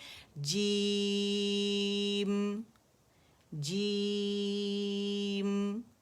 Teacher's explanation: میم ساکن کیا آپ نے، اور میم کی آواز کا اظہار کرنا ہے، اسے ظاہر کرنا ہے